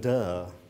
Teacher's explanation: So the criticism aimed at someone else implied by duh is thus transformed into self-criticism through a phonetic shift. Duh lacks the sarcasm of the prolonged vowel duh and the falling tone of it